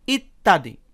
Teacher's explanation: এখানে ত আছে একবার, সাথে জ ফলা আছে, আর উচ্চারণের সময় ত দুইবার উচ্চারিত হয়েছে। তাহলে আমরা বুঝতে পারলাম যে শব্দের মাঝে ব্যঞ্জনবর্ণের সাথে জ ফলা যুক্ত হলে জ ফলাযুক্ত সেই বর্ণটির উচ্চারণ দ্বিত্ব হয়, অর্থাৎ ডাবল হয়।